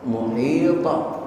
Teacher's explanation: qalqalahnya qalqalah kubra karena mati di akhir bacaan